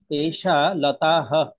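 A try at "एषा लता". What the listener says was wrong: লতা, হা নেই তো এখানে। লতা। লতা, তাটা দীর্ঘ হবে।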